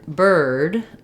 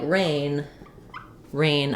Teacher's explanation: so in the word bird um or in the word paper the r sound can continue it's vocalic